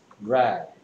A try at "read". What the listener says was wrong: 그러면 EA가 애가 아니죠? EA가 무슨 소리 내고 있어요? E 소리 낼 수 있죠. 자, EA가 낸 두 가지 소리를 선생님이 전에 알려준 적이 있는데요. EA는 뭐나 뭐가 된다 했어요? A나 E가 된다고 했습니다. 여기서는 뭐가 됐어요? 그래서 합쳐서 뭐가 됐다?